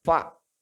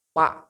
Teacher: Harus ada celah. Karena fa itu satu bibir, bibir bawah bagian dalam ketemu dengan gigi seri atas.